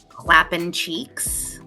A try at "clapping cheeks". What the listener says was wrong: There's a G at the end of that. It's clapping not clapping.